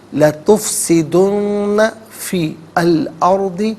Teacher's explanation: اور ارضی میں را ساکن ما قبل حمزہ پر زبر، را ساکن کو پر کر کے پڑھیں گے